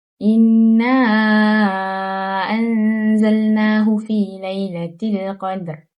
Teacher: Seterusnya, ada mad jaiz munfasil, iaitu huruf mad, bertemu dengan huruf hamzah dalam 2 kalimah dan wajib dibaca panjang 4 ataupun 5 harakat. Kemudian, nun mati bertemu huruf zai, iaitu ikhfa hakiki, dibaca dengan dengung 2 harakat. Di sini juga terdapat mad asli dengan panjang 2 harakat dan alif lam qamariyah, iaitu dibaca dengan jelas dan nyata, seolah-olah ia tidak bersambung dengan huruf seterusnya. · Untuk ayat pertama, tajuk yang dapat dikenal pasti ialah nun syaddah, iaitu nun yang bertanda syaddah di atasnya. Ia dibaca dengan mendengungkan bacaan dengan panjang 2 harakat.